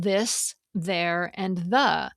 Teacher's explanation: There's the voiced one, as in this, there, and the, where your vocal cords buzz a bit.